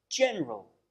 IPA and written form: ˈdʒenərəl (general)